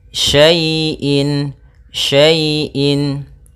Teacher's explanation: Pada bacaan wa kulla syai'in, syai' di sini ada fathah bertemu dengan ya sukun. Maka apabila ada huruf ya sukun didahului dengan harakat fathah, ini kita namakan dengan bacaan lin, yang mana ya dalam membacanya lembut